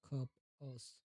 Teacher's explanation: A short, you. A neutral, central sound